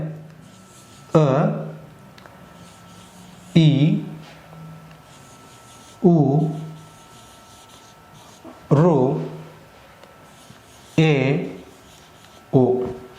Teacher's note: ಒಂದು ಮಾತ್ರ ಕಾಲಗಣದಲ್ಲಿ ಉಚ್ಚರಿಸಲ್ಪಡುವ ಅಕ್ಷರಗಳಿಗೆ ಋಸ್ವ ಸ್ವರ ಅಂತ ಹೇಳಿ ಕರಿತೀವಿ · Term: ಹ್ರಸ್ವ ಸ್ವರ